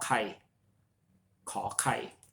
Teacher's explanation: it has an aspiration to it so you should sound it with with an H meaning there should be air coming out of your mouth